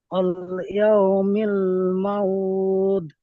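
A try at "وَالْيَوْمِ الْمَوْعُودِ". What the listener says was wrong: মাউউদ, এই আইনটা পরিষ্কার করেন, মাউউদ। সাড়া টান দেন, সাড়া। সাড়া। সাড়া টান দেন।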